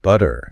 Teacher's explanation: Yeah, that's often called a flap T. Basically, when a T sound falls between two vowel sounds, it often softens into this really quick, light D sound. Technically, it's an alveolar tap, but it sounds like a soft D.